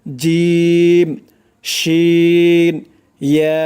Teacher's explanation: জিহ্বার মধ্যখান উপরের তালুর সাথে লাগবে এই 3টি অক্ষর উচ্চারণ করার সময়